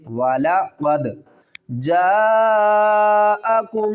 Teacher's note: دال ساکن ہے، قلقلہ کریں گے